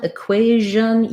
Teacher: usually T-I-O-N has the shun sound, voiceless. In equation, it's a zh sound rather than a sh sound. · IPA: /ʒ/